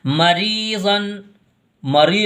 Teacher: یہاں پر اخفا ہوگا اور یہاں پر یا ساکن اور اس سے پہلے حرف کے نیچے زیر ہے تو یہ یا مدہ ہوگی اور یہ را باریک پڑھی جائے گی کیونکہ را کے نیچے زیر ہے